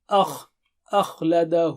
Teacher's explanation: ان ماله، ما لہو، ہو وہاں پر جو ہے نا مد ہے. اخلد، خا موٹا اور اونچا ہے، آ باریک ہے